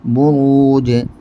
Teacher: جیم ساکن بروج. جیم کی آواز لوٹ کر نکلے گی چونکہ جیم ساکن قلقلے کا حرف ہے